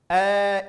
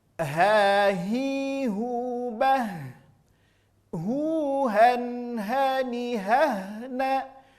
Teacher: Murni dari pangkal tenggorokan. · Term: huruf ha